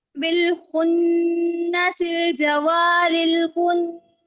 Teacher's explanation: خاء پہ خراٹے کی آواز آنی چاہیے